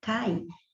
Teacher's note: o A é sempre vogal. Então, aí, ó, com a semivogal I, você tem o ditongo decrescente